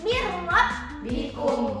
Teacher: Nah, di sini ada nun mati bertemu dengan huruf ro. Jadi nun matinya tidak dibaca, dimasukkan ke huruf ro, tetapi tidak dengan dengung. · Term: bila gunnah